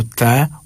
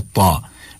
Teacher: ता मोटी आवाज के साथ, ता बारीक आवाज के साथ। एक जो है वो हर्फ ये पुर होता है यानी कि मोटा होता है और दूसरा जो है वो बारीक होता है, मुरक्कक होता है।